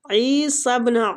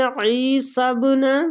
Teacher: عین کو کھینچیں گے، یا مد ہو رہی ہے